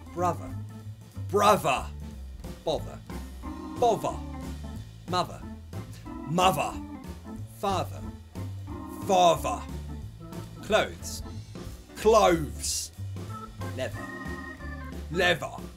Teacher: those th sounds would be replaced by a v sound · The voiced, which sounds like a V. They have a vibration in the throat.